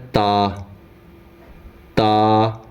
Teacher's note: زبان کی نوک جب اوپر کے اگلے دو دانتوں کی جڑ کی طرف والے آدھے حصے سے لگے تب جا کے تا ادا ہوتا ہے